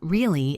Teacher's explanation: If I say it flat, really, it sounds bored or sarcastic.